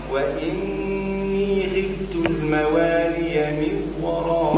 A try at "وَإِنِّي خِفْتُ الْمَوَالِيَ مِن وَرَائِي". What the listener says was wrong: مش من وراء، من وراء. الإدغام مع الغنة مش إدغام فقط. من وراء، من وراء، مش من وراء.